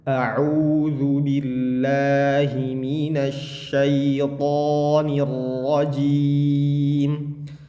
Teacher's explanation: Dia harusnya tidak mendengung ketika bilang a'u